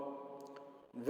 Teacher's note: व का उच्चारण स्थान दांत और होठ होता है। यानी हम जब व वर्ण का उच्चारण करेंगे तो व बोलेंगे तो होठ और दांत दोनों से इसका उच्चारण होता है।